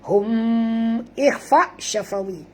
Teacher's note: Kerana dua-dua huruf ini, iaitu huruf mim dan huruf ba, adalah huruf bibir. Syafawi itu maknanya kebibiran.